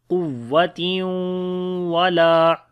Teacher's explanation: Qaf we read in heavy sound. After the tanween, the next is waw, we make idgham with ghunna.